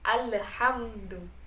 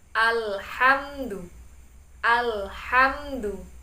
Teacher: tidak boleh memunculkan huruf E di antara lam dan ha. Kebiasaan membaca terburu-buru, jadi memunculkan huruf E di antara lam dan ha.